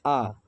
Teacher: आ जो है वह वृत्ताकार स्वर नहीं है